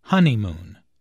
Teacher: There are three syllables in honeymoon, with the stress on the first syllable